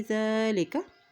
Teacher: ज़ाल के ऊपर खड़ी ज़बर है, एक हरकत लम्बा अदा करें और ज़ाल को नरमी से अदा करें।